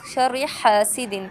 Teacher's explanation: حسد میں دال پر کلکلا کریں گے یعنی باؤنس بیک کریں گے · ہا کو ہم دوبارہ سے حلق کے درمیانی حصے سے ادا کریں گے اور اس کا جو پیسج یعنی جو ایئر فلو ہے وہ ہم حلق سے باہر کی طرف یعنی باہر ہم نکالیں گے، ٹھیک ہے۔